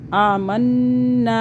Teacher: الف آ رہا ہے نون کے بعد، کھینچیں گے 1 الف کے برابر، زیادہ نہیں